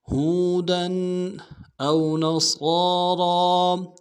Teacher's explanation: حمزہ کو واو کے ساتھ ملانا ہے، واو لین بغیر کھینچے پڑیں گے، نون کو نون سے ادا کرنا ہے، صاد کو موٹا ادا کریں گے، صاد کے اوپر کھڑا زبر ہے، ایک الف دال میں کھینچیں گے، را کو موٹا ادا کریں گے، را کے اوپر کھڑا زبر ہے، ایک الف دال میں کھینچیں گے۔